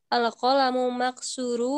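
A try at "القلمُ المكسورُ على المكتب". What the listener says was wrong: Al-qalamul, jangan ragu pada alif lam mud bersambungnya jadi mul gitu ya. Jadi mul itu sudah menyambung ke alif lam.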